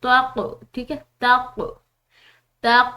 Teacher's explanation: क ये हरूफ कलकला में से इसको हिला कर अदा करेंगे